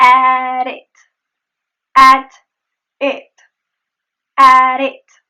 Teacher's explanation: The flap T is just at the end of the word at.